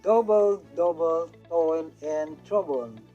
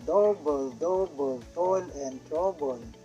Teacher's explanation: the regular succession of the strong syllable and weak syllable has a musical effect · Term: trochee